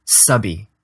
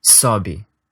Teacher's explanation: It's basically the exact same tongue position as that vowel, and the only difference is that you're rounding your lips a little for the Portuguese vowel.